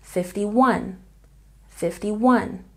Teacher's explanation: the main stress is on the last syllable